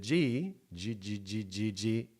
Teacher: Velar because it happens in the back of the throat · Today, the G is a voiced velar plosive. That means that it's vibrating, the vocal folds. So when you do the K, it does not vibrate. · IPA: /g/